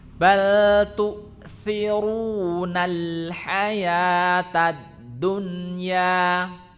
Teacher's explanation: Tu'thirunal nal alif lamnya tetap terdengar ya, ada bainiyah. Hamzahnya mati berarti ada di tenggorokan bagian bawah.